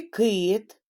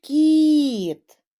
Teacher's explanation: у слові кит звук к звучить твердо у слові кіт звук ки ки звучить м'яко